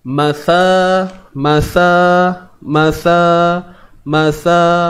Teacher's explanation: Huruf ni bukan huruf Sin tapi huruf ta Yang mana kita kena keluarkan hujung lidah okey keluarkan hujung lidah sikit dapat tak oke dan jangan lupa · perlu dipanjangkan dengan kadar dua harakat sebab Apa sebab mad asli